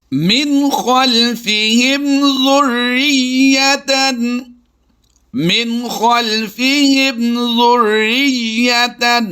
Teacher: بغیر غنہ کے اظہار شفوی کرتے ہوئے پڑھا ہے